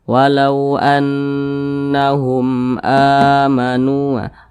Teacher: Jadi kalau ada huruf hamzah yang dipanjangkan itu namanya adalah mad badal